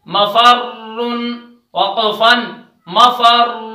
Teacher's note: را پر تشدید ہے اس وجہ سے را موٹی بھی پڑھی جائے گی اور تشدید بھی اس میں باقی رہے گی